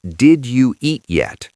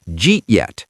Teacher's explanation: In American English, the D and the Y at the beginning of did you merge together into a J sound. This is called palatalization. Did you becomes J.